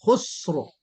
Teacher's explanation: خسر میں را آپ سے باریک ہو گئی، را کو پر کرنا ہے